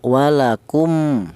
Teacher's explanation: Ya, idgham itu ee menyatu ya cara bacanya huruf mim yang mati yang awal ini langsung dibaca menyatu ke huruf mim yang nomor dua. Itu namanya idgham.